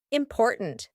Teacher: and then at the end we have a stopped T important there's no T that we actually speak at the end